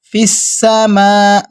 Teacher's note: فا کو سین کے ساتھ ہم ملائیں گے تو سین سیٹی کی طرح نکالتے ہیں